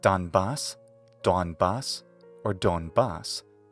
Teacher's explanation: In English, Donbas, Donbas, or Donbas all work, with the stress accent on the final syllable